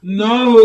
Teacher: इस हा की आवाज आप सीने के जोड़ से अदा करने की कोशिश करें।